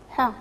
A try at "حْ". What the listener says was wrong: شوفي معنا الحرف الحاء الثاني عنده آش، عنده السكون وكنقراوه بينيها مزيان، بينيها مزيان. وكنقراو ح.